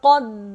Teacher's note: قاف کو موٹا پڑھیں گے اور قاف جو ہے دال سے ملے گا